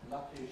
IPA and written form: ˈlʌki (lucky)